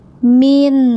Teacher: Nah, ini jelas suara nunnya min, tidak boleh memantul ya. Jadi suara nun ujung lidahnya nempel ke langit-langit ya, itu tidak boleh lepas. Kalau lepas jadi mantul gini, min gitu ya.